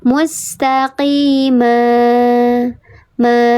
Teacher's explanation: Dibacanya panjang dua harakat, tanwinnya hilang. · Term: mad